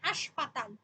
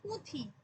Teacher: এখানে কোন নাসিক্য ব্যঞ্জন নেই এটা উচ্চারিত হচ্ছে অনুনাসিক হয়ে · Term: শতনাসিকী ভবন